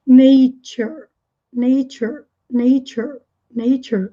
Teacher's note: esse T faz o som do CH, né? O TCH para nós seria no português. Tch. Nature.